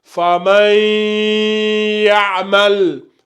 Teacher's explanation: Il y a la fusion qui se passe. Donc, le ya prend la place du noun. Et du coup, tu fais la runna. La runna, c'est le nazima.